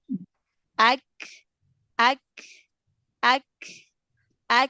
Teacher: Up, Intinya ditemuin dulu di makhrotnya, ya, syiddah dulu, baru kemudian renggangkan makhrotnya, ya. Kalau kaf kan pangkal lidah bawah ketemu dengan langit-langit antara langit-langit lembek dan langit-langit keras tuh, ya. ak, Nempel kan ak, dia, nempel.